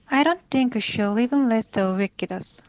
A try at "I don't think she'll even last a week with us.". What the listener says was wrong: Week with us? I didn't hear the W here. It sounds like you said a week with us. So let's try that again.